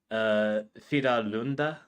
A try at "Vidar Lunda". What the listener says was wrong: Oh, and it's a R, not an L. Yeah, Vidar Lunda. Vidar Lunda.